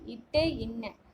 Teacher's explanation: நாவின் நுனி அன்னத்தின் நுனியை பொருந்துவதால் பிறப்பவை